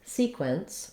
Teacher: easily in your everyday speech so looking at the word sequence we have first syllable stress · we want length on our first syllable and our second syllable is short